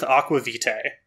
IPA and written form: ɑkwə vitei (aqua vitae)